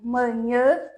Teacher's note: eles são nasalado não existe no espanhol